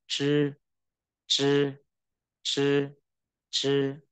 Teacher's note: Đây là âm uốn lưỡi